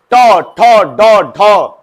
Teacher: ट मुर्दा तालू के जस्ट ऊपर टंग से मारेगा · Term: ट वर्ग